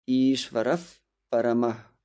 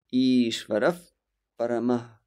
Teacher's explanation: The sound F naturally blocks the outgoing air, or at least it considerably slows it down. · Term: Upadmaniya